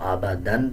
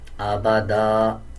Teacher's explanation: 2 زبر کے بعد جب الف آ رہا ہو وقف کرتے ہوئے ایک زبر پڑھتے ہیں اور ایک زبر سائلنٹ کر دیتے ہیں. اب اس پہ اگر ہم وقف نہیں کریں گے تو آبادن پڑھا جائے گا، اور جب وقف کریں گے تو آبادا اس طرح پڑھا جائے گا